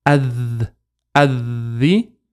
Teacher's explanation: So we say Adhi. And make sure we hold, because the letter after the Lam has a Shadda. So we have to hold it.